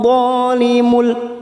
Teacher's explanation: ada huruf dha berharokat fathah diikuti alif, 2 harokat kita panjangkan. Dhalimul limul, ada tanwin yang bertemu dengan huruf lam namanya idgham bila gunnah, hanya masuk tanpa mendengung.